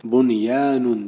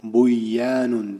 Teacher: ular bir so'zni ichida kelgani uchun bu yerda idg'om qilinmasdan oddiy o'qiladi. Demak, oyatimiz byanun deb o'qiladi.